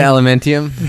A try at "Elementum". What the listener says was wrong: Elementum. There's no I. It's like aluminium, right? They add the I when it doesn't.